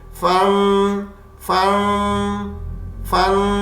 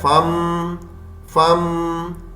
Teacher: نون کی آواز شروع ہوتی ہے اور میم میں بدلتی ہے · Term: نون کی آمیزش